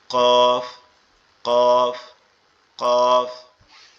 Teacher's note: জিহ্বার গোড়া তার উপরের তালুর সঙ্গে লাগবে, লেগে উচ্চারিত হবে কফ